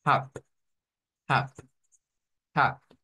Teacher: Está escrita B, una B, pero el sonido es de una P.